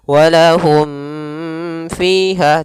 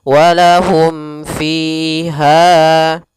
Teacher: Apabila ada mim mati bertemu seluruh huruf hijaiyah setelahnya, maka dihukumi dengan izhar syafawi, yaitu cara membacanya suara mimnya tidak boleh digunahkan, tidak boleh ditahan, tidak boleh walahum fiha, tidak, tapi langsung saja dibaca dengan jelas walahum fiha.